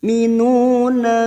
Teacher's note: Nu duma diikuti wawu sukun 2 harokat kita panjangkan.